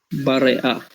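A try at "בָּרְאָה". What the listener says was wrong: Bar'a. Bar'a. It's just that even though that's technically a vocal shva, we don't pronounce it like that. It's bar'a.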